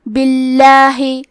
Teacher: تو لفظ الجلالہ کے لام کا حکم ہے ترقیق تو ہمیں حرف اللام کو پتلی آواز میں پڑھنا ہے